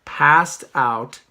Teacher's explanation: Unlike cut up, passed out is a regular verb. So when I say passed out, I say passed, and the ed is a T sound